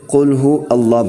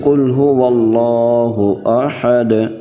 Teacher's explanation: اللہ نہیں پڑھنا، واؤ کو لام سے ملانا ہے